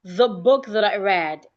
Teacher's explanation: Note th words. We have th in the and we have th in that. Your tongue must be outside.